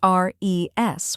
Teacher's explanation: Next is res, which sounds like res in rest and is the stressed syllable.